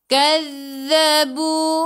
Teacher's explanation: hujung lidah keluar pada gigi depan, tekan ke dalam zal